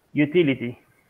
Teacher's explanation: the third one utility okay so you say your t lady because the other the Ty has no stress so it changes to d